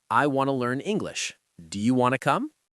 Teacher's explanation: Want to becomes wanna. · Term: reductions